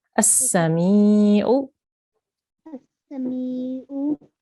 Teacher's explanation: This is a ya mad. So when you have a ya with a sukoon on top and the letter before has a kasra, you have to elongate the letter, make it longer for 2 seconds